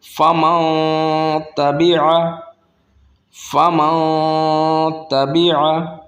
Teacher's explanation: یہاں پر نون ساکن ہے اور نون ساکن کے بعد تا آ گیا، اب تا حروف حلقیہ میں سے نہیں ہے، تا ہے حروف اکفا میں سے جو سابقہ کلاس میں ہم نے پڑھا تھا تو یہاں پر تا حروف اکفا ہے تو یہاں پر اکفا ہوگا، یہاں پر اظہار نہیں ہوگا